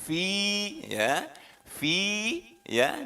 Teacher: Fi ya, diayun fi untuk membedakan antara yang panjang dan tidak boleh diayun fi, ya, itu dua harokat, dua ketuk